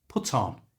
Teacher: simply move the T sound from the end of put to the front of the O in on so put on becomes puton and at a natural speed puton